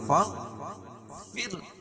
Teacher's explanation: رائے ساکنہ سے پہلے زیر ہو تو را باریک پڑھی جاتی ہے